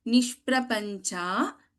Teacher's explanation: In nishprapancha we have sha, shanmukha sha or murdhanya sha.